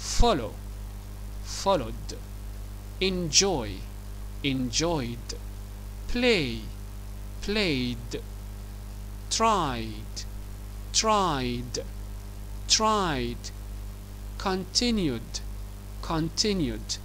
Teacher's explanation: فهنا كل الأفعال منتهية بأصوات حروف متحركة عند حالة النطق الإيدي تنطق دي